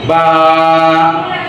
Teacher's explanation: ঠোঁট চাপা থেকে একটু ফাঁকা হয়ে যাবে